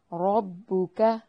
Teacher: را کو موٹا ادا کرنا ہے، کاف کو باریک پڑھنا ہے